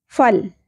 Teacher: لا ساکن پہ قلقلہ نہیں ہونا چاہیے